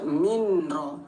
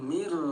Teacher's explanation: lebur nol harakat jangan ditahan gak boleh dengung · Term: idgham bila gunah